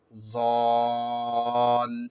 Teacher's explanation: ضاد پہ پہلے مد ہے تو ضاد پہ مد کرتے ہوئے لام سے ملیں گے، ڈائریکٹ ضاد کو لام سے نہیں ملیں گے